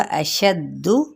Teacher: اشد ان حرکات کو لمبا نہیں کریں گے، شین کی زبر کو دال کے ساتھ تشدید کی وجہ سے ملائیں گے